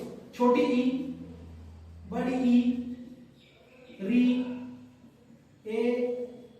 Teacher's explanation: अग्रस्वर, जिसमें जीभ का आगे वाला पार्ट काम करता है